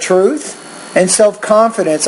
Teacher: I like how on the first item your tone is a little bit higher and then it drops when you get to the second idea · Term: intonation